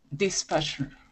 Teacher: we say dispatcher with the accent at the very beginning